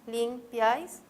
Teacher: la mayor fuerza de voz está en piáis, es una palabra aguda